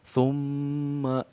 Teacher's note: ada interval waktu 2 sampai 3 harokat untuk di dengung mimnya ya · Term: mim tasdid